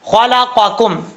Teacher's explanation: خلقکم، خا حروف مستعلیٰ میں سے ہے، پر پڑھا جائے گا، قاف حروف مستعلیٰ میں سے ہے، پر پڑھا جائے گا، اس کا مخرج ہے زبان کی جڑ اوپر والے تالو کے نرم حصے سے لگے تو قاف پڑھا جاتا ہے۔ اب نرم حصہ کون سا ہے یہ سوچنے والی بات ہے۔